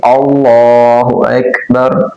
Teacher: اللہ اکبر، اللہ ایسے نہیں بولا جائے گا، حمزہ کو لمبا نہیں کرنا، اور لفظ اللہ کا جو لام ہے اس کو موٹا پڑھیں گے